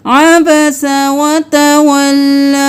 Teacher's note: یہاں پر ہم جب وقف کریں گے تو ہم لام کھڑی زبر لا کی آواز نکالیں گے. ہم مد کو لمبا کھینچ کر نہیں پڑھیں گے کیونکہ وقف ہو جائے گا، تو ہم صرف ایک الف کے برابر کھینچ کر وقف کریں گے.